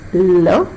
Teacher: of love it is possible to prolong the pronunciation only because there is partial closure and air escapes continuously through the sides of the tongue